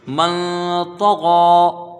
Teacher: یہاں ایک الف کی مقدار غنہ ہوگا یعنی اخفا ہوگا، اور غین میں کھڑا زبر ہے، اس کو ایک الف کی مقدار کھینچ کے پڑھیں گے، من طغى ہو گیا۔